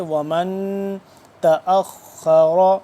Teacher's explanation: نون یہاں پہ ساکن ہے، یہاں پہ ہم اخفا کریں گے ، ومن تأخر تأخر خوا بھی موٹا را بھی موٹا، حمزہ